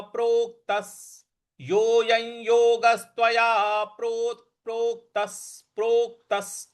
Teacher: देखिए, प्रोक्त, त के बाद जो प्रो आधा क है उस पर हमको बल लगाना है, प्रोक्तस। और त के बाद जो विसर्ग है उसके आगे स है, तो इसका उच्चारण, विसर्ग का उच्चारण भी हमको स ही करना है